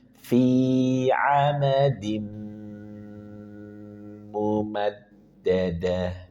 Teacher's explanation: tahan dua sampai harakat kemudian dengungkan.